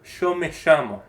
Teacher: But in places like northern Mexico, it might be a Y sound, como me llamo. And in Argentina, actually, it can go all the way to a sh sound